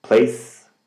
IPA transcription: pleɪs